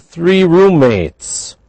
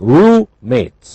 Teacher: roommates we don't pronounce two M's only one M roommates it sounds like Rue mates huh but really it represents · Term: Blended